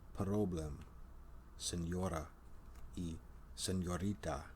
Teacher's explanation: is a Glide I can hold the American R sound ER in Spanish and other Latin languages the r sound is often an alveolar tap or Trill known as a rolled r